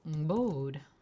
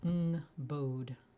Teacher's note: And its modern form is ngbode, falling tone on the O.